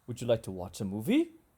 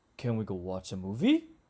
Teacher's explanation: yes no questions have rising intonation this means that intonation falls a little then rises up